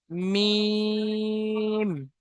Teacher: দুই ঠোঁটের শুকনো অংশ থেকে উচ্চারিত হয় মিম।